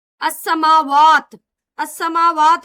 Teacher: السماوات لام شمسی ہے، سین میں ادغام ہوگا۔